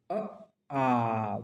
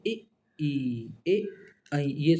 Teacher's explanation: ऊपर नीचे ओठ हो जाएंगे गोल नहीं होंगे